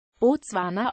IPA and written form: bɔˈtsu̯aːna (Botswana)